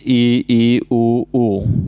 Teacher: सब्रत स्वर में सबसे कम मुंह खुलेगा